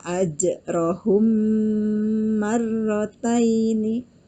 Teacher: mim mati bertemu dengan mim maka cara membacanya harus digunakan atau didengungkan dua harokat ditahan dua harokat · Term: idgham mimi